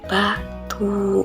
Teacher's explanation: Cara pembentukannya kedua bibir menutup rapat dan pita suara bergetar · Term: huruf B